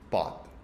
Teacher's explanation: la que sale perjudicada es la O, con baja energía, y se abre